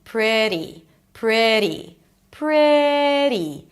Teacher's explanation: Then a flap t and a high e. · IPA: ˈprɪt̬i